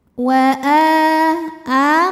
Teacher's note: mad badal karena ada Hamzah yang dipanjangkan dibaca panjang dua harakat